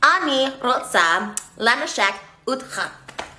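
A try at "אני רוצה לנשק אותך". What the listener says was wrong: Okay, so it's not utcha. You said it right, but at the end it's otcha. Otcha.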